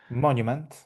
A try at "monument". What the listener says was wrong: Yeah, that's it. Spot on. Monument. That's exactly how it said.